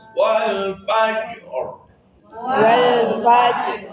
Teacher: Qalqalnya nampak, ronnya juga nongol. Rnya tafkhim.